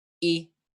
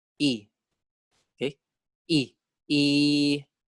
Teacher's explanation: if it's long we pronounce it with the mid tone